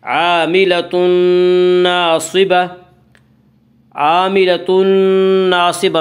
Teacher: عاملۃ ناصبہ میں ادغام بالغنہ ہوگا۔